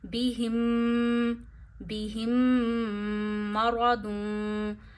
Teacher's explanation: मीम की आवाज नाक में ले जाके एक उंगली जितनी ठहरानी है। बिह बिह मरादून मीम ज़बर मा र ज़बर र पे ज़बर या पेश हो र को मोटा पढ़ते हैं ना तो र को यहां मोटा करना है। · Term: गुना